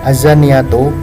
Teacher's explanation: Dari bacaan ayat tersebut terdapat hukum bacaan yang mana pada lafal az-zaniyatu terdapat hukum bacaan alif lam syamsiyah, dikarenakan alif lam mati yang bertemu dengan salah satu huruf syamsiyah dibaca lebur atau idgham sehingga bunyi al tidak dibaca